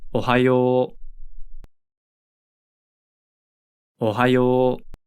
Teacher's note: Remember that an OU combination usually creates a long O sound in Japanese.